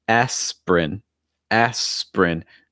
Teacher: notice it goes right from the s right to the prin